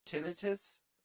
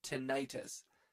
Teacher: Tinnitus, stressing the first syllable, common with medical professionals, and tinnitus, stressing the second syllable, often used by the public